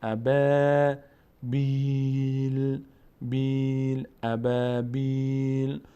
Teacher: ابا فتح بعدش الف صدای آ اما پر نمیشه